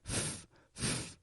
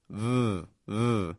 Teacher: F and V use the exact same position F however is just voiceless f f whereas V is voiced v v same position and